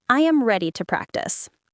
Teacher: Now say it as a statement with a falling tone.